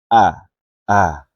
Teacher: Jadi saat membunyikannya, jangan membuka bibir terlalu lebar, biar tidak berbunyi tebal. Dan dibaca jahar atau jelas, yaitu tanpa ada hembusan nafas yang terdorong saat mengucapkannya.